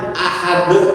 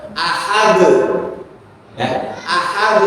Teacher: sifat huruf dal adalah sifat qalqalah, ya, maka jika dia disukunkan atau berharokat sukun harus dipantulkan